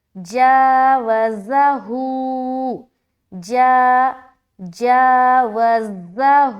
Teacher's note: جا میں الف مدہ کر رہے، یہاں ایک الف کھینچنا ہے، اور ہوں میں ایک الف کھینچنا ہے کیونکہ ہا کے اوپر الٹا پیش ہے، اور الٹا پیش برابر ہوتا ہے واو مدہ کے۔